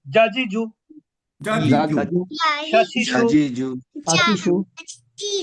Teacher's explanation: এটা জিহ্বার মধ্যভাগ থেকে উচ্চারিত হয়। আর জিহ্বার মধ্যভাগ উপরের তালুর সাথে যুক্ত হয়। স্পর্শ করে। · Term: জিম